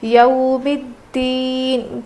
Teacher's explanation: حروف لین ہے نا، اس لیے ہم نرم آواز کے ساتھ جلدی ادا کر کے پڑھیں گے